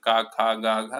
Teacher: जो भी व्यंजन का, खा, गा, घा, सारे कंठ से ही बोले जाते हैं